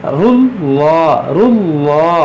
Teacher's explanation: यहाँ पर देखें लाम पर खड़ा ज़बर है और मुशद्दद है, तो ये मुशद्दद हर्फ को दो बार पढ़ेंगे, एक बार रा से मिलाकर, एक बार इसकी अपनी हरकत के मुताबिक। इसे रुल्ला, रुल्ला, और लाम पर खड़ा ज़बर है तो इसको एक अलिफ के बराबर खींचेंगे।